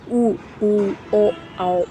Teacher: व्रतमुखी जिसमें हमारा पूरा मुंह जो है, मुंह के जो ओठ हैं उनकी आकृति जो होती है गोल हो जाती है